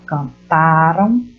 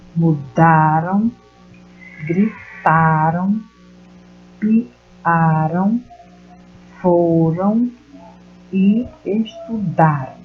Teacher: a sílaba tônica ela é identificada na penúltima sílaba. E isso é para os verbos no passado. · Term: paroxítona